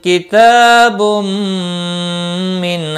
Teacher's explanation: با تنوین کے بعد حروف ارملون کا میم ہے، ادغام با گنہ ہوگا